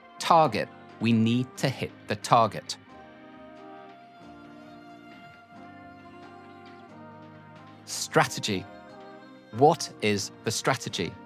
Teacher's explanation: focus on the sharp puff of air on the T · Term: sharp T sound